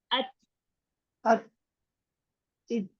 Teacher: जो ही जुबान ऊपर लगे, मखरिज बंद हो, तो आराम से छोड़ेंगे, जल्दी नहीं छोड़ेंगे। आराम से ऐसे छोड़ेंगे कि आपको खुद अपनी एयर वहां से फील हो कि हवा निकली है। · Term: हम्स